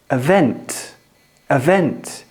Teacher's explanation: But on event, the stress is on the second syllable.